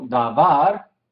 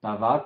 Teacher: sílaba tónica al final